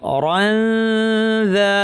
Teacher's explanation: অরানদা পড়ার সময় জিব্বাকে পরের হরফ দালের মাখরাজে কাছাকাছি নিয়ে আসবো, নাক থেকে গুণনা করবো, এটার নাম ইখফা।